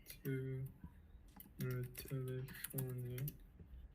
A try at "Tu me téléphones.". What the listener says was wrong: Tu me téléphones. Alors, le ES, c'est muet. It's silent. Et on dit tu me téléphones.